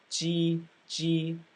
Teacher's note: the je sounded kind of like a DJ because your tongue was a little bit more forward in your mouth